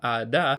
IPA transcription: ɾ